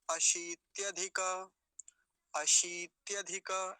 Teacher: पहले तालव्य शकार, उस पर दीर्घ ईकार है, बड़ी ई की मात्रा है, तो लंबा खींच के बोलेंगे थोड़ा सा